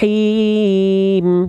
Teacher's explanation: Hi berbisik dari tengah-tenggorokan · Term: H kecil, hak kecil